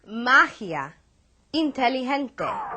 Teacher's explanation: when G is followed by either an e or an i it sounds kind of like H like in the English word hot but a little speedier and more guttural